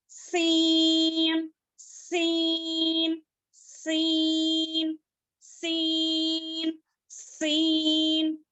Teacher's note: जुबान की नोक को नीचे के 2 दांतों के जड़ में लगाने से सीन अदा होता है। सीन को बारीक पढ़ेंगे और सीन में जो है सीटी की आवाज आती है